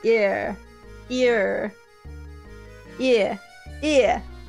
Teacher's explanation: You just screw every vowel towards A and you drop R sounds with ear.